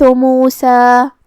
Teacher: کلمت موسیٰ کے آخری میں ہم اس پہ رکیں گے تو اس پہ مد الف سے رکیں گے مطلب ہم آخری میں دو مد کے برابر اپنی آواز لمبی کریں گے